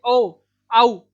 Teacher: कंठोष्ठ यानी कंठ और ओष्ठ यानी होंठ से मिलकर इनका उच्चारण होता है